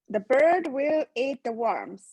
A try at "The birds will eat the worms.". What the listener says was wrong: So don't give will any importance. It's an unstressed word. These are the ones in italics are unstressed.